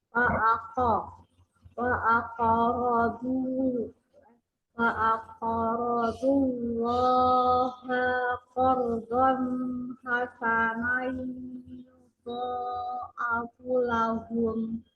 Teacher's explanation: lamnya melekat pada lafaz Allah itu karena sebelumnya ada huruf yang berharokat fathah, maka dibaca dengan tebal